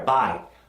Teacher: think of going higher, buy. It's got a brighter sound. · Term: I sound